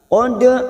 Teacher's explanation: dal sukun yang mati asli di tengah kalimat. Qalqalah sugro, jangan lupa dipantulkan.